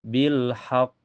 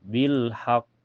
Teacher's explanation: Cirinya ee di akhir kalimat ya dan bertanda tasdid. Cara bacanya agak tertahan dulu lalu dipantulkan. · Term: qalqalah akbar